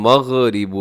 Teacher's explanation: ایسے غین کو جب ساکن ہو تو اپنے اس کی آواز کو ڈبل ہونے سے بچانا ہے